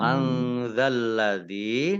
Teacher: nun sukun bertemu dengan huruf zal, bacaan ikhfa, baca samar-samar